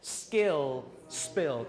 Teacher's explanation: there's only one situation in English where we have the unaspirated and unvoiced. And that's when it follows an S.